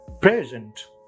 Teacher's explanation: when it is adjective it's present Accent on the first syllable